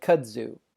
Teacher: Next is the letter zeta, which has the sound like a Z in English, zeal. Or when it occurs in the middle of the word, it has the sound of a combination of DZ